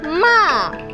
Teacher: Fourth tone is a falling tone